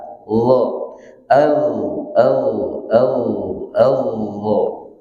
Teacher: huruf dha hurufnya tidak ada udara yang mengalir, tapi suaranya ngalir · Di mana makhrajnya? Ujung lidah bertemu dengan ujung gigi seri atas. Dha. Dha.